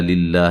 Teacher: لفظ اللہ کو باریک پڑھیں گے، ٹھیک ہے، اس سے پہلے زیر ہے